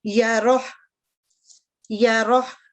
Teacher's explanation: را جو ہے یہ مفخم ہوگی یعنی تھک, اور ہا کے اوپر سکون کی علامت آ جائے گی